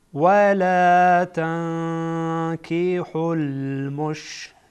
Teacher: ولا نون ساکن بعدش کاف آمده، کاف از حروف اخفا هست، اینجا اخفا میکنیم. ولا تنكحوا المشركات، را در اینجا باریک میشه، باریک خوانده میشه.